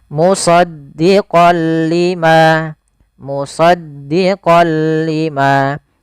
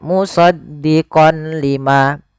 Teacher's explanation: Idgam artinya memasukkan. Memasukkan apa? Suara nunnya kepada huruf lam, tapi tidak boleh disertai dengan gunah. Maka dinamakan dengan idgam bila gunah. · Awalnya kalau kita baca musaddiqon karena bertemu dengan huruf lam, tanwinnya masuk ke huruf lam, suara n-nya dihilangkan menjadi, maaf diganti menjadi huruf lam.